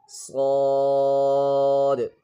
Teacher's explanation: صاد is pronounced like the sin but with a heavier sound, and in sin here the tongue is not touching the lower teeth, but in صاد here the tongue is touching the lower teeth, and this is a heavy letter